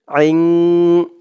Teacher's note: আইনের আওয়াজটা গলার ভেতর থেকে শক্ত করে আনতে হবে